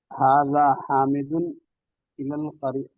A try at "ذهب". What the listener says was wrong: حاضہ نہیں ہے، وہ ذہب ہے مولانا، ذہب ہے وہ. ٹھیک سے دیکھ کے پڑھیے.